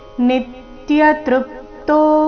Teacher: ನೀ ಮತ್ತು ತೃ ಮೇಲೆ ಆಘಾತ ಗಮನಿಸಿ